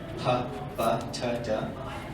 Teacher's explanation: plosives, which are stops, which are made by stopping the air and then releasing it.